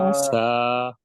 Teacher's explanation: আচ্ছা, এই থাটা উচ্চারণ হবে, জিহ্বার যে আগা আছে, জিহ্বার মাথাটা উপরে, সামনের উপরে যে 2 দাঁত, ওই 2 দাঁতের মাথার সাথে অর্থাৎ জিহ্বার মাথা আর সামনের উপরের 2 দাঁতের মাথার সাথে লাগে, মানে লেগে উচ্চারণটা শুরু হয়, তাহলেই আওয়াজটা দেখবেন নরম হয়ে যাবে। আর প্রথমে হালকা একটু বাতাস দিতে হবে, আমরা লাগিয়ে দেখেন, একটু বাতাস দেন আগে, আগে হরফ বলার দরকার নাই, সফট ভাবে লাগাবো, মানে কোন রকম শুধু একটু লাগাবো, লাগিয়ে একটু বাতাস দিতে, দেখি একটু ট্রাই করি।